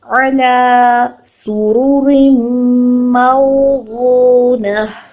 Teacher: نون کی حرکت کو لمبا نہیں کرنا، فوراً سے نیکسٹ گول تا ہے اس کو ہا ساکن میں چینج کر کے فوراً سے نون ساتھ ملا کے ادا کرنا ہے